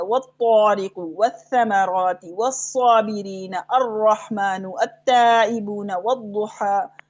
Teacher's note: ठीक है, इदगाम शमसी का मतलब क्या है कि लाम अल की आवाज नहीं आएगी, लिखा हुआ तो नजर आएगा आपको, है तो अल के साथ, लेकिन जब हम इसको पढ़ेंगे तो लाम अल ड्रॉप हो जाएगा, ये नहीं पढ़ा जाएगा